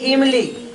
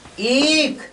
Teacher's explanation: हरस्व बोलना है तो तुरंत बोलिए, और दीर्घ बोलना है तो थोड़ा देरी तक बोलिए, दोगुना समय लीजिए। तो दीर्घ स्वर के उच्चारण में दुगना स्वर से दुगना लगता है, यानी हरस्व से दुगना समय लगाना है आपको दीर्घ में।